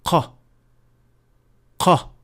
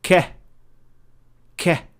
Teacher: But for the Kaf, the sound is produced when the deepest part of the tongue is touching the area between the soft palate and the hard palate. So it is a little bit behind the pronunciation point of Qaf, closer to the opening of the mouth · the movement of the back of the tongue is very similar, if not identical. The difference with Qaf is that it is a little bit deeper into the mouth, as it is only touching the soft palate, and the sound is produced at that point.